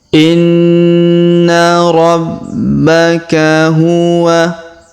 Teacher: huruf na berharokat tasdid, maka kita tahan dan kita dengungkan 2-3 harokat